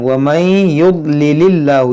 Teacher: اس میں جلالت سے پہلے زیر ہے تو اس کو ہم باریک پڑھیں گے، اور یہاں پر دیکھیں نون ساکن کے بعد ہا ہے، یہاں پر اظہار کریں گے، یعنی یہاں غنہ نہیں کریں گے۔